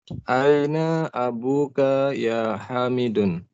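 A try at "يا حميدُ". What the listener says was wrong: Ya Hamidu, tidak boleh tanwin ya.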